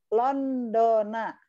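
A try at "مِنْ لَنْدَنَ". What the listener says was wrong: Aywa, Landana ya, bukan Landona ya. Min landana ya, landana, oke.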